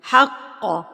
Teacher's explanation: قلیلا وَإِيَّايَ فَاتَّقُونَ وَلَا تَلْبِسُوا الْحَقَّ، قاف پر بھی ہوگا اور اس کے اوپر تشدید ہے، قاف کے اوپر تشدید ہے تو قاف کو آپ نے ایک تو پر کر کے پڑھنا ہے اور تشدید ہے تو مضبوطی سے بھی پڑھنا ہے